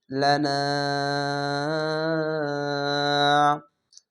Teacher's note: তিন আলিফ টান এর নাম হচ্ছে মাদ্দে আরজি তিন আলিফ টান